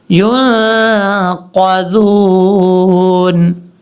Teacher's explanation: قاف کو اوپر پڑھنا ہے، ذال کو بریک پڑھنا ہے